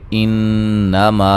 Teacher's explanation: नून मुशद्दद पे गुन्ना ज़रूरी है। मा अलिफ मद्दा है।